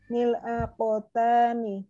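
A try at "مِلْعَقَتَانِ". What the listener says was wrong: Mil akotani asanti sahih.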